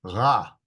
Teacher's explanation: The R is pronounced at the back of the throat, so it's not like in English, but it's ra.